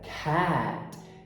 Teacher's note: No inglês, os fonemas PTK, quando eles são tônicos, eles são aspirados. Então a pronúncia não é cat, e sim cat.